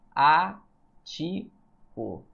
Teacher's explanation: Asiático, pessoal, é uma proparoxítona. A sílaba tônica é a antepenúltima.